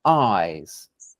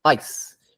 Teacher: In eyes, it seems long. In ice, it seems faster, compressed, something like that.